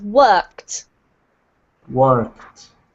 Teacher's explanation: we pronounce it as if it had the t ending